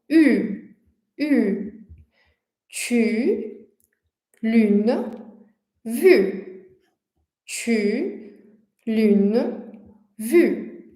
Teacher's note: a gente pronuncia quase como se fosse um I, ao invés de pronunciar um u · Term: U biquinho